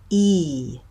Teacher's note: when I make that vowel sound my lips are very spread